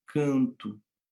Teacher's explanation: E no português brasileiro, a gente transforma muitos Os, né? Quando eu falo a palavra canto, eu escrevo com O, mas eu pronuncio com U.